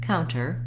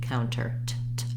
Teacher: You'll hear it the way I just said it, counter with no T sound, and also you'll hear counter with a true T, an aspirated T, counter. T, t.